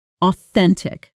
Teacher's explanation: Pronunciation: O-then-tic. Stress on the second syllable.